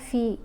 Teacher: فا کے نیچے زیر ہے، ساتھ یا ساکن ہے، تو ہم نے اس کو کھینچ کر پڑھا فی، کیونکہ یہ حرف مدہ ہے۔